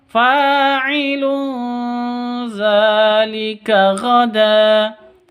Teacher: Tanwin bertemu dengan zal. Bacanya samar didengungkan. Ikhfa hakiki.